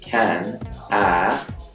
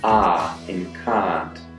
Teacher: in most types of Australian English the vowel sound in can ah changes to AH in card